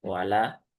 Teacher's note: Dia huruf ada di bibir ya. Dengan memonyongkan bibir terlebih dahulu.